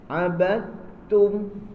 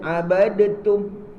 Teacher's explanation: Sempurnakan idgham mutaqaribain. Namanya dal dengan ta tu lain sifat tetapi makhrijnya sama